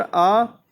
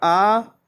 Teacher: कंठ है ह्रस्व स्वर अ, दीर्घ स्वर आ